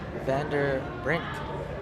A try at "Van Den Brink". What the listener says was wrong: N. It's an N.